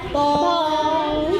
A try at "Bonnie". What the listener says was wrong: That's bone, B-O-N. Bon. Knee.